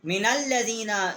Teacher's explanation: نون جو ہے اس کو ہم نے لام کے ساتھ مشدد کیا ہے۔